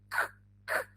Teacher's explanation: we stop the air with the back of the tongue, yes, la parte de atrás de la lengua, that touches the top of your mouth.